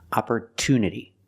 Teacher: But in the word opportunity, the stress is after the T.